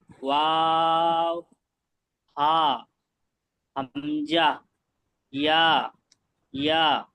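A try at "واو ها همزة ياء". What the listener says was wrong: এবার টানগুলো একটু খেয়াল করবেন, টান ছেড়ে যাচ্ছে। যেমন হামজা, ইয়া, ইয়া, একালি টান আছে, যেটাই বলেন।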